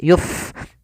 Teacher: Fa yang dia sukun memiliki sifat HAM maka dibaca dengan mengalirkan nafas yuf jangan Yup dengan pa ya tapi dia dengan F gitu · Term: sifat hamas